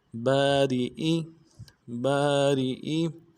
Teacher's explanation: را کو باریک ادا کریں گے، حمزہ کو بھی نرم سے ادا کریں گے